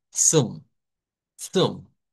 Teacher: Es un africado, ¿verdad? Que lo vamos a conocer como el africado TS. Es como pronunciar la T y la S juntas.